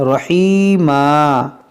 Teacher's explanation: دو زبر پر جب وقف کرتے ہیں تو اسے الف سے بدلتے ہیں